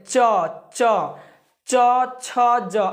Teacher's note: च छ ज जब ऐसे बोलते हैं ना, तो हमारा जो जीभ है ये कहाँ पर टच करता है, तो ये मुंह के ऊपरी भाग में, यानी कि तालू इसको बोला जाता है। ठीक है, तो तालू में टच कर रहा है, तालू में टच कर रहा है।